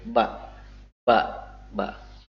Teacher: dikeluarkan dengan cara merapatkan kedua bibir